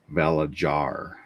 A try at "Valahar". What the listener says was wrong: I think it's supposed to be silent. Yeah, or not make that American J sound.